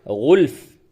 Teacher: वफ की हालत में क्या होगा गुल्फ फ को साकिन कर देंगे गुल्फ। अब अगर इस जगह पे आप वफ नहीं करते बल्कि मिला करके पढ़ते हैं तो यहां पे इकलाब होगा।